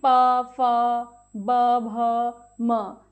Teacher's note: यहां पर होठों के बीच वायु रुकती है और फिर बाहर निकलती है